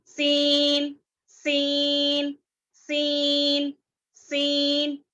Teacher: زبان کی نوک کو اوپر نیچے کے وہ یعنی سامنے کے 4 دانتوں کے کناروں سے مضبوطی سے لگاتے ہوئے باریک اور اس کو سیٹی کی آواز سے پڑھا جاتا ہے